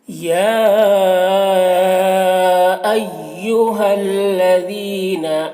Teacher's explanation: یا میں یہ جو مد ہے یہ مد متصل ہے، اسے 3-4 الف کے برابر کھینچ کر پڑھیں گے، اور ایہل ہا کو لام سے ملا کر پڑھیں گے۔